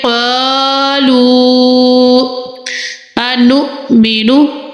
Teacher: حمزہ ساکنہ کو ہم جھٹکا لگا کر پڑھیں گے۔ انؤمن کما، جی ادھر الف مدہ کا قاعدہ ہے، ادھر مد بھی ہے، تو ہم الف کو 3 الف کی مقدار میں لمبا کریں گے میم کو۔